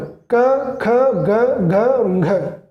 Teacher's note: ये कोमल तालव्य में आ जाते हैं